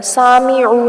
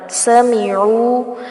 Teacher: سین کی زبر کو لمبا نہیں کرنا، سامعو نہیں پڑھنا، سمیعو ایسے پڑھیں گے.